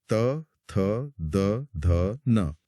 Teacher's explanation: और बाहर आए तो दांत मिलते हैं। जब जीभ दांतों को छूती है तो चौथी लाइन बनती है त वर्ग।